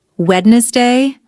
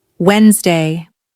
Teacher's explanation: The natural pronunciation is Wednesday. The D is silent.